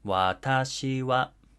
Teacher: phrases in the Tokyo dialect start low and ascend in pitch after the first syllable · it starts low and it goes high